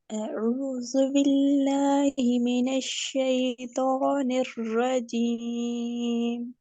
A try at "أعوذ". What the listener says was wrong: رک جائیے اعوذ عین اور حمزہ میں واضح فرق ہو.